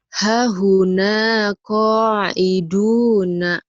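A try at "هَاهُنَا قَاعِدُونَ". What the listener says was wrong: yang panjang ini haknya nih panjang.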